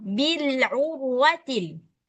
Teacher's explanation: Ro sukun sebelumnya ada huruf ain dan berharakat dammah. Maka otomatis rnya dibaca tebal, enggak boleh dibaca bilur urwati.